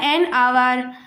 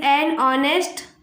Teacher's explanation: यहाँ पे एच जो है वो प्रोनाउंस नहीं होगा क्योंकि एच यहाँ पे साइलेंट है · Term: एच इज साइलेंट